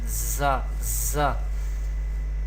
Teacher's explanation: when we pronounce za, we create whistle sound. It generates whistle sound za, za.